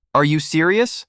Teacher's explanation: First rising tone. This is used for yes no questions or when showing interest.